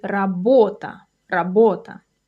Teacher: The stress is on the second syllable, by the way. So you say работа, работа.